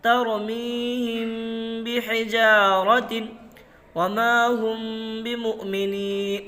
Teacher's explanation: میم ساکن کے بعد با آیا ہوا ہے، اس لیے میم کو गुन्ना के साथ इक्फा करके पढ़ेंगे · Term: اخفاء شفوی